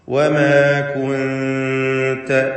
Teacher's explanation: ഇഖ്ഫാ ഹഖീഖി എന്ന വിധി അനുസരിച്ച് നൂനിനെ അവ്യക്തമാക്കി മണിച്ചുകൊണ്ട് ഉച്ചരിക്കുക